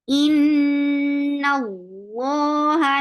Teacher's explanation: Noon will be light, but lafz jilala will be heavy because you can find fatha before it.